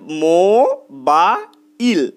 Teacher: দেখো এই মো আর বা এটা কিন্তু একবারই উচ্চারিত হচ্ছে, মো ময়ের পরে অ আসছে, বা বয়ের পরে আ আসছে, কিন্তু ইল এই শব্দটার শেষে ল ব্যঞ্জন ধ্বনি আসছে এবং লয়ের পরে কোনো অ উচ্চারিত হচ্ছে না, ইল এটা লয়ের মতনই উচ্চারিত হচ্ছে, অর্থাৎ ব্যঞ্জন ধ্বনি। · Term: রুদ্ধদল